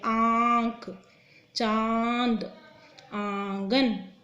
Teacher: इसकी कोई जीभ हमारी टच नहीं होती, सिर्फ आवाज़ नाक से आती है। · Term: अनुनासिक